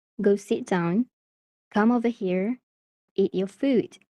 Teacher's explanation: do you hear that falling pitch at the end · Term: falling intonation